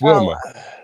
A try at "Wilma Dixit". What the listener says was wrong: Wilma Dixit. No, you're putting the pause. You're saying it as different words. It's 2 different words, not 4.